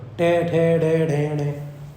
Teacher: ये टे वर्ग किससे? ये मूर्धा से बोलेगा